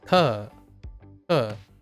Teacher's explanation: You go up and then back down, but all across one syllable.